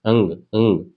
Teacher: आवाज कंठ से निकलनी चाहिए और नाक से भी निकलनी चाहिए। अब आप बोल के देखो कि कंठ से निकालो और नाक से निकालो आवाज साथ में निकलनी चाहिए।